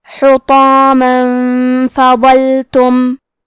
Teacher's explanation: فا حروف الاخفاء میں سے ہے تو ہم یہ حکم کو غنہ کے ساتھ ادا کریں گے